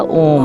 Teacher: जाता है क्योंकि जब हम ॐ बोलते हैं तो वह को तीन मात्रा में जोर से बोला जाता है